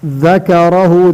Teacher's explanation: ذکرہ ذال کو سے ادا کرنا. ذال اس طرح ادا ہوتا ہے, زبان کی سر دو سامنے والے اوپر دانتوں کی سر سے لگا کر ادا ہوتا ہے. ذکرہ را کو موٹا کرنا.